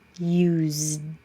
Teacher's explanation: Think about use. It looks like an S, but the final sound is voiced Z.